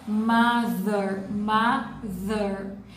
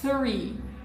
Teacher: O som do TH sem voz é three, for example, representado por este símbolo que está aqui, que é tipo um O com um traço no meio, o que significa a boca e a língua no meio. Então, mother, TH com voz, e three, TH sem voz.